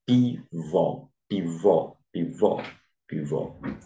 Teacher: cujo acento tônico eh recai na última sílaba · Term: oxítonas